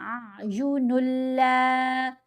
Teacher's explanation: نون کو لام سے ملانا ہے تو ساتھ غنہ نہیں کرنا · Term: ادغام